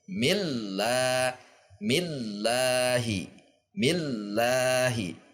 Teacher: Mil tekan kemudian seperti hendak turun namun dia naik kembali la. Saat dillanya naik m kalau dilambatkan mil turun laanya naik lagi.